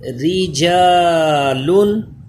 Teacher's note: را باریک پڑھا جائے گا کیونکہ اس کے نیچے زیر ہے